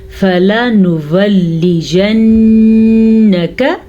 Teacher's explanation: नून के गुन्ने के साथ नून पे शद है तो गुन्ना करना लाजमी है